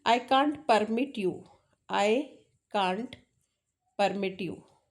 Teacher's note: My focus is on mit, right? That is verbal form. This study is called stress, कि किस में स्ट्रेस देना है. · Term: stress